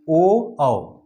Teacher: कंठ और होष्ठ से जो बोले जाने वाले हैं ओ औ, ओ औ, कंठ से भी बोला जा रहा है ओ औ, होष्ठ से भी बोला जा रहा है ओ औ।